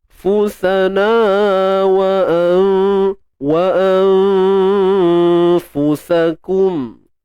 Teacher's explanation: Sekali lagi nun mati bertemu fa, sama je. Ikhfa hakiki, kemudian dibaca nipis dan martabat pertengahan.